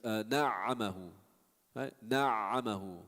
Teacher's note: the ayn, when you give it a shadda, fa'a, you still hear it.